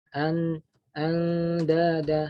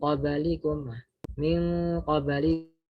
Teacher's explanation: Di sini kan bukan istilahnya bukan idgham, di sini hanyalah ikhfa. Jadi nunnya tetap ada meskipun samar begitu.